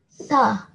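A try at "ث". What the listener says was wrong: It seems as if you're saying it with your mouth closed, with your teeth touching each other. So tip of your tongue coming slightly out of your mouth and touching the upper teeth.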